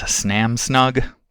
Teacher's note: So in the case of Samsung being produced as Snam Snug, we have an addition. In both cases where there's supposed to be an S at the beginning of a syllable, we get a SN instead.